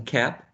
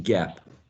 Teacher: it's the same place of articulation but only voicing changes